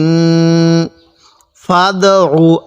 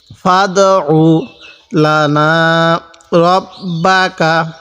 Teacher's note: আইনটা একটু চাপ দিয়ে পড়ব কারণ অনেকে আমরা আইনটাকে হামজা পড়ি